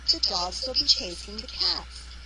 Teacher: each sentence has three stress syllables dogs chase and cats